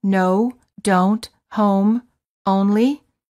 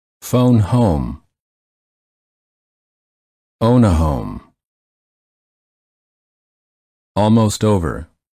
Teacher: the lips are very rounded and tense and the tongue is a bit tense and it moves from the mid High to the high position the common spelling patterns for this sound include the letter O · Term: o as in boat